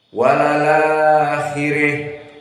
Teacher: Al-akhirahnya dibaca fathah dengan ra mufakhamah, dan al-ula dibaca al-imalah. Namun jika waqaf pada al-akhirah, maka terjadi al-imalah dan ra menjadi muraqqaqah